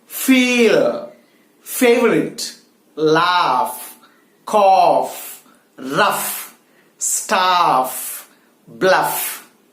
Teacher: the upper teeth has to touch the middle of the lower lip to produce this particular voiceless sound. It's F. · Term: voiceless consonant F